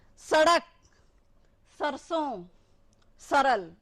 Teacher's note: स दांत में स, तो दंते, यहां से जो जीभ लगती है हमारी आगे दांतों पे